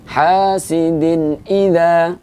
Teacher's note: hukum bacaannya adalah idhar halqi dibaca dengan satu harokat dibaca dengan jelas apa adanya